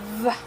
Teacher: which is voiced, labial dental, fricative